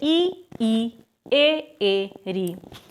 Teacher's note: में पहला प्रकार है है अग्र स्वर अग्र स्वर क्यों क्योंकि जिन स्वरों के उच्चारण में हमारी जीव का जो अगला हिस्सा कार्य करता है तो उनको कहा जाता है अग्र स्वर